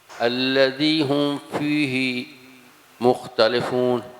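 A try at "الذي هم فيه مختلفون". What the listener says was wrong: مختلف نہیں، دیکھیے مختلفون یہ اردو میں آگے تلے لام زیر لے، میں نے آپ کو جو بتایا تھا مختلفون.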